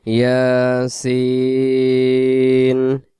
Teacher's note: ইয়া এক আলিফ, সিনকে আমরা 4 আলিফ টান দিয়ে দেব